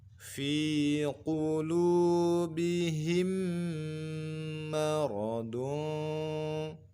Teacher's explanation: kita dengungkan dengan merapatkan kedua bibir kita.